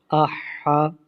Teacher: حمزہ ہا زبر آہ، ہا، اس کو حلق کے درمیان سے پڑھتے ہیں۔ ہا زبر ہا، آہ ہا۔